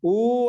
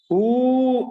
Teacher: ఊ అన్నప్పుడు 2 మాత్రాకాలం, ఊ అన్నప్పుడు 3 మాత్రాకాలం, అంటే ప్లుతం అంటాం